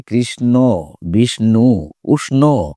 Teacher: মূর্ধন্য স এর সঙ্গে আসার কারণে সেটি কিন্তু মূর্ধন্য ন এ পরিণত হয়ে যায়